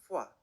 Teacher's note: Korean also lacks a phonemic fa sound in contrast with Mandarin, but when the glottal fricative ha is followed by o, u, or wa, it's pronounced fwa, more like an F.